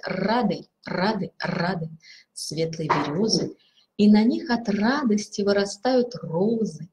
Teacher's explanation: звук р дрожащий вибрант